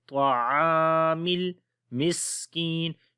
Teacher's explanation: میم کو لام کے ساتھ ملائیں گے